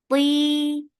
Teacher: it has itbaq. So give the itbaq. Place your tongue up on the palate.